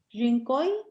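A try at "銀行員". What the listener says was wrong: Ginkoin. Ajá, la N al final sí. Ginkoin. Es gi. Ginkoin.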